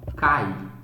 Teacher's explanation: neste caso, eu tenho uma vogal A e uma semivogal I. O som veja que o som é átono, cai, não cai.